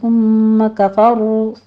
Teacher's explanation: ثم میں سا کو نرمی سے پڑھتے ہوئے آگے غنہ واجبہ کر دیں گے، 2 کاؤنٹ کرنا ہے۔